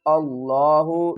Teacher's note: حمزہ کو لفظ اللہ کے لام سے ملائیں گے اور لفظ اللہ کو پر پڑھیں گے